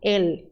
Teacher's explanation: E fechado, L bem pronunciado